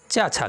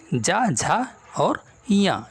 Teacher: चा वर्ग के अंतर्गत चा छा ये दोनों अघोष वर्ण हैं, जबकि जा झा और या ये तीनों घोष वर्ण हो जाएंगे।